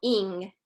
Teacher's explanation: the ing sound is kind of stopped in the back of the throat